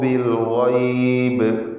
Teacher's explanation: വഅദർ റഹ്മാനു ഇബാദഹു ബിൽ ഗൈബ്. ഗൈനിൽ തഫ്ഖീം കൊടുക്കുക. അന്ത്യത്തിൽ സാക്കിനത്തായ ബാ അതിന് ഖൽഖല കുബ്റ നൽകി വ്യക്തമാക്കി അതിനെ വഖഫിൽ ശബ്ദം കേൾപ്പിച്ച് ഉച്ചരിക്കുക.